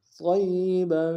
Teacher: قا کو موٹا ادا کرتے ہوئے یا کے سامنے آئیں گے، یا کے اوپر تشدید زور دیں گے، اور با کے اوپر تنوین غنہ کریں گے